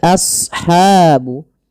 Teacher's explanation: Kemudian pelafal ashabu as shad ya huruf shad tebal jangan as jangan sin tapi as as ya a-nya tipis shadnya tebal karena shad punya sifat huruf isti'la dan idbaq